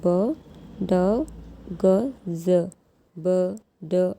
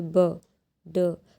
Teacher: जैसे ही आपको इन साउंड को प्रोड्यूस करेंगे ब ड, तो एक ऐसा गले में आपको वाइब्रेशन फील होगा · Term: वॉइस्ड साउंड